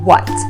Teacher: lips slightly and making that sound very very short and then end with a t by touching the tip of your tongue to the back of your top front teeth